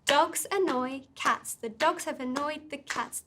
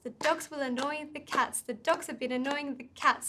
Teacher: been annoying the cats so you see what i did there i kept the beats on dogs annoying and cats and i fit in words like the or could have been or the in between the beats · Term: stress-timed language